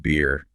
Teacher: >> Yes, it's much more common in many bee accents often replacing the t sound. Better might be pronounced beer with that little catch in the throat. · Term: glottle stop